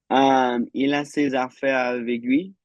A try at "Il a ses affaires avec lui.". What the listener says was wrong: Just the one detail. Actually pronounce the C on avec.